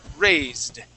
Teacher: The word is raise, right? And that E is going to be silent, and we're going to jump from that Z sound straight to the D